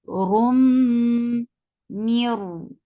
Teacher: This idgham is without gunna, so you are not keeping the sound in your nose at all. But consider as noon is not there at all.